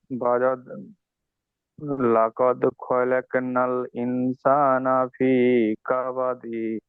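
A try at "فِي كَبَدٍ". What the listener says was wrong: না, সরি, এখানে ভুল হয়েছে। এখানে দালকে সাকিন করতে হবে, কাবাদ এইভাবে হবে।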